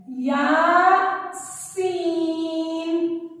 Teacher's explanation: सीन को सख्ती से पढ़ेंगे, दांतों को जोड़ के। दांतों को जोड़ा जाए तो फिर सीन की आवाज पैदा होती है, या सीन।